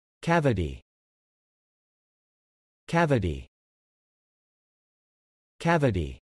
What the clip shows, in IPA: ˈkæv ɪ ti